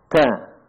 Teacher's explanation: ujung lidah bertemu dengan pangkal gigi seri bagian atas